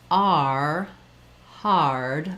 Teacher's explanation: my tongue has to glide on the R. It starts a little bit lower and then it glides into that tight R position. So this one is static and this one is moving.